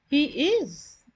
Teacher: the subject and verb are not inverted but this is said with a rising intonation